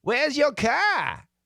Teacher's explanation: it's possible to not really hear that r it's called a non-erotic r the traditional american r is strong